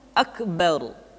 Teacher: Hal yang keempat yang mesti dibaca tebal adalah beberapa kondisi huruf ra. Huruf ra mesti dibaca tafkhim atau dibaca dengan suara yang tebal ketika dia berharokat fathah atau berharokat dhammah, kemudian ra sukun didahului oleh fathah, contohnya akbar.